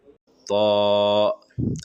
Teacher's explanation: زبان کو اوپر تالو میں سٹا کر موٹی آواز نکال کر طا ادا کرے.